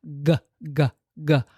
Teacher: Um, and it's just resting there as the back of the tongue rolls a teeny tiny bit back and up